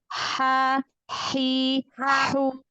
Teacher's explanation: H dari tengah tenggorokan. H kecil.